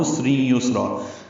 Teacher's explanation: سین ساکن دونوں میں ہمس ہے، سین باریک ہوگا، سانس جاری رہے گی اس کے پڑھتے ہوئے